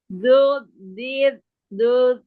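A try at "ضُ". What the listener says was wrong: Nah, jangan ditambah dud. Jangan tambah sukun lagi di akhir. Bu, terakhirnya du biasa. Domah.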